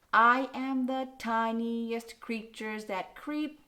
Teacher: That's 4 anapests, and so this is anapestic tetrameter.